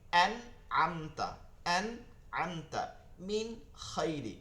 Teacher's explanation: তো গুন্না ছাড়া স্পষ্ট করিয়া পড়তে হবে